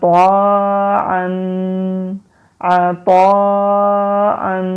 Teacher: یہ لہر والی مد ہے، اس کو 3 سے 4 الف کے برابر لمبا کرتے ہیں